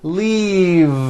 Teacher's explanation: an unvoiced F the word is leave with a voiced V keep the voicing going throughout the whole word and voice the V